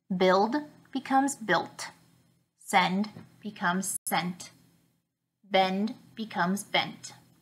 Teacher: these verbs change their final D sound to a tee sound